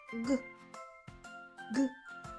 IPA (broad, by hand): g